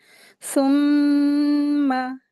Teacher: آیت دیکھیں، آیت نمبر 21 ہے، بسم اللہ الرحمن الرحیم، ثم، ٹھیک ہے، غنہ کر کے اس کو پڑھیں گے، ثم، ایسے پڑھیں گے، میم کو کھینچیں گے نہیں لیکن کیا ہے، اس کو غنہ کریں گے